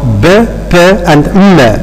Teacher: We notice that all of them are being produced by involving the two lips. So they are bilabial.